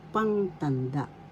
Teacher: Pang, first syllable pang, second syllable tan, third syllable da. The accent is in the first syllable